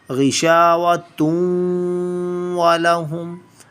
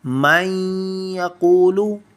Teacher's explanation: And the first was tanveen. We'll hide the sound of tanveen in our nose from 2 to 3 seconds. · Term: ikhfa